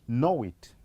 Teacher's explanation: That tends to form or to insert a glide in between the two. So at this point, we'll instead insert this glide w